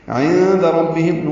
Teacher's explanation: نون ساکن کے بعد دال آنے کی وجہ سے اخفا ہوگا